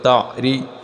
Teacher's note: را کے نیچے زیر آ گئی اس کو پتلا پڑھنا ہے